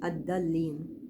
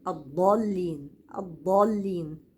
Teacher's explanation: واللام ما افخمهاش نطق الضاد من اخر الحافه وليس من الطرف لو نطقتها من الطرف هتطلع داله